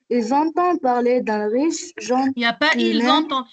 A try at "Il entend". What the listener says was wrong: Il n'y a pas ils entendent. Écoute, il n'y a pas un S ici pour faire la liaison. Il entend.